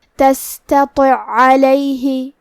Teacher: کلمت تستطع میں آخری میں حرف العین ہے اور اس کے بعد عین ہے کلمت علیہ، یہاں حکم ہے ادغام، مطلب ہم پہلے عین کو دوسرے عین میں ملا کے ایک ہی عین اور تشدید کے ساتھ پڑھیں گے